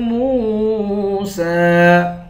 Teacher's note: میم کو واو سے ملا کر واو کو بھی ایک الف کی مقدار کھینچیں گے